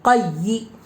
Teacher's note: زیر کو جلدی پڑھے، تھوڑا بھی نہ کھینچے، زیر کی آواز نیچے کو جاتی ہے